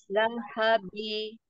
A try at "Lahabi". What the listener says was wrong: Nah, ujung-ujungnya jangan ada gema ya. Lahabi.